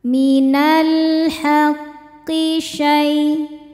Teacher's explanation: Karena alif lam menghadapi huruf qamariah yaitu ha. Cara bacanya dibaca dengan jelas lamnya atau disebut izhar qamari. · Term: idhar qamari